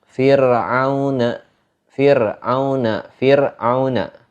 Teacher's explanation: Ketika kita membaca huruf ro-nya itu dibaca tipis. Enggak dibaca tebal, baca tipis.